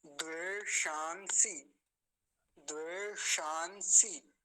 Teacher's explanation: सबसे पहले मूर्धन्य शकार है, फिर दंत्य सकार है। इन दोनों में भेद करने में बाधा होने के चांस बने रहेंगे, आपको समस्या हो सकती है, इसलिए अभी देख लीजिए ध्यान से।